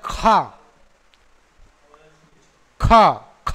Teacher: इसको बोलते समय जिह्वा पिछले भाग से फूल करके ऊपरी तालु में स्पर्श कर जाती है। खा, खा, जैसे उर्दू अल्फाज है ना, खा ना, तो बोलते समय देखो आप ध्यान से, तो जिह्वा ऊपरी तालु में टच कर जाती है। · खा कहते ही कि जिह्वा का जो मूल है वो क्या होता है? ऊपरी तालु में टच कर जाता है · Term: जिह्वा मूली